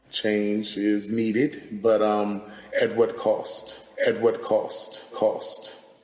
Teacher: Another feature that we see in DC, similar to New York, is the raised thought cloth vowel, that ah. This is a new feature in DC, and we think it's part of a pattern of DC varieties becoming more like northern cities as opposed to the south.